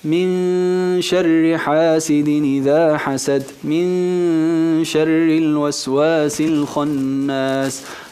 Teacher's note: Hemos escondido, hemos quitado, hemos camuflado, hemos disimulado la nun, hemos hecho el ikhfa · En este caso, la nun con el shin es al-ikhfa, la disimulamos. Min, dejamos su característica, que es la gunna, la nasalización, y quitamos el cuerpo de la letra.